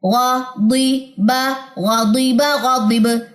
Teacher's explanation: با کے اوپر کلکلا ہوتا ہے با جزم پہ، تو اس لیے آواز یہاں پہ گونجی ہے، یعنی کہ باؤنس بیک ہوئی ہے